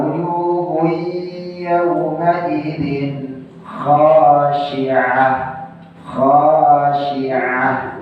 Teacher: Itu ain pakainya, bukan hamzah.